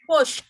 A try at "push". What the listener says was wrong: Ada haknya, tinggalan. Ha. Push. Masih push, kurang hak. Haknya kurang. Hak. Push hak.